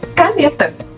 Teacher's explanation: Paroxítona, a sílaba tônica na penúltima sílaba.